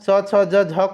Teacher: तालु से उच्चारण होता है च वर्ग का